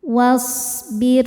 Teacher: Ra sukun dibaca tarqiq sebab sebelumnya baris kasroh. Cara bacanya tipis